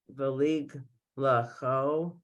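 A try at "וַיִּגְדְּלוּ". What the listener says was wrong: No, do again. It's a 3 dots. You don't want to pronounce them. Valig du lato. Du lato.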